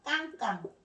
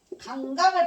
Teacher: 예사소리보다 강하고 단단한 깡깡. 깡깡을 발음하는 게 강강을 발음할 때보다 성대가 긴장됩니다. 성대가 긴장되는 된소리예요.